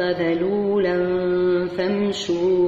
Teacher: عندنا هنا عندنا إخفاء بغنة مرققة